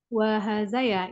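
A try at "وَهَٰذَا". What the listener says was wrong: Nah, betul, betul.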